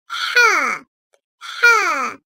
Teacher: Gördüğünüz gibi karnındaki noktası gitmiş, bize H harfi gelmiş. Bu harf boğaz ortasından gırtlak bölgesinin hafifçe sıkılmasıyla yumuşak olarak çıkarılır. Türkçe'de olmayan bu harf kalın sesli tonda telaffuz edilir.